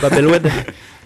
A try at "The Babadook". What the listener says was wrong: Non, c'est Baba. C'est pas Babel. C'est The Babadook.